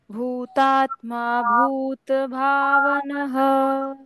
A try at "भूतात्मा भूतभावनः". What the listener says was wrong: Correct.